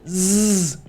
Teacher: air come right above your tongue and then you're vibrating so you should feel the vibration in your throat and you should also feel the vibration in your mouth so again z excellent like a b buzzing around so we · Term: z sound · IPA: /z/